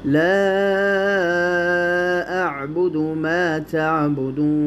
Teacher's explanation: یہ مد جائز منفصل ہے، اس کو 4 یا 5 الف کے مقدار اس کو لمبا کر کے پڑھیں۔